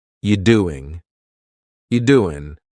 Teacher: So we're going to start this question with just you, which is reduced to yi.